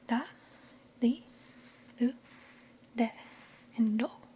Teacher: It sounds kind of like a D does in English, in American English. But it's a flap R sound